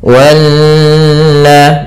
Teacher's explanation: Di sini ada bacaan namanya gunnah, yaitu nun yang bertasydid. Cara membacanya menahankan dulu sepanjang 2 harokat sampai 3 harokat. Wanna, baru dilepaskan.